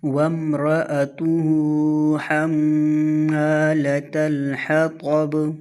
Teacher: ایک تو یہ طوا ہے، تا نہیں ہے، اور طوا موٹے حروف میں سے ہے، یہاں پر اس کو موٹا پڑھیں گے۔ اور دوسری غلطی کہ یہاں پر بھی با کے اوپر قلقلہ ہوگا، کیونکہ با وقف کی صورت میں ساکن ہوگا۔